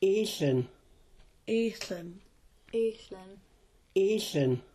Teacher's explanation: The symbol that looks kind of like a question mark is called a glottal stop. It sounds like a catch or an abrupt stoppage of air in the throat. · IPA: ʔíɬən